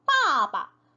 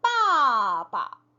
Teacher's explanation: 경성 소리 다음에 나는 음은 바가 소리 나고 처음에는 빠 소리가 났단 말이에요.